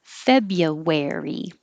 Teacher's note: it really sounds like Febya or Febu, but no R.